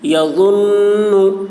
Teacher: یہاں پر نون میں غنہ ہوگا کیونکہ نون پر تشدید ہے ، نون میم پر تشدید ہو تو غنہ ہوتا ہے، نون